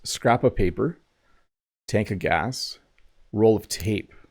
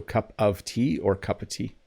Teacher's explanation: sometimes when I speak quickly, I use a as the pronunciation for of